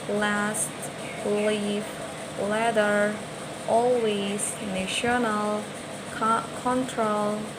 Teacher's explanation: Dan yang terakhir di alveolar ini ada huruf L. L itu disebutnya sebagai voiced alveolar lateral.